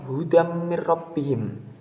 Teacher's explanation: tanwin bertemu dengan huruf mim, dan lafaz seperti ini hukum bacaannya disebut dengan idgham bi gunnah, dan cara membacanya pun masuk dengan mendengung.